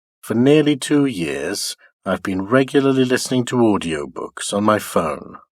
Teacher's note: nearly is another accented word in the first IP it is uttered high in Pitch · the nuclear tone it's a rise or rather a low rise